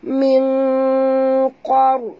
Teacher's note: Kita kena sorokkan bunyi nun ke dalam qaf. Disertai dengung. Dua harakat. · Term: Ikhfa haqiqi